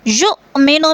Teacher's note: یؤمنو میں حمزہ ساکن ہے، جھٹکا دے کر پڑھیں گے